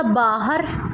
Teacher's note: ਜਦੋਂ ਉਹੀ ਲਗ ਹਹ ਤੋਂ ਬਾਅਦ ਲਾਗੀ ਇਹ ਹੋਊਗੀ ਨੀਵੀਂ ਸੁਰ